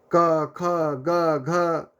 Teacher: ये प्राण वायु जो है मित्रों कंठ पे, ये देखिए ये कंठ है, ये कंठ वाला हिस्सा है, यहाँ पे जोर दे रहा है, ये हवा कंठ पे ठोकर मार रही है। तो यहाँ से हमारा पैदा हो जाएगा कवर्ग